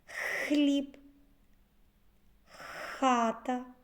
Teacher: х повітря зустрічає перешкоду язик та піднебіння Тому цей звук приголосний Зверніть увагу що звук х здебільшого вимовляється твердо